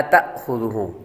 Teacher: جب الف پر جزم آ جاتی ہے تو وہ حمزہ بن جاتا ہے اور حمزے کو جھٹکے کے ساتھ پڑھتے ہیں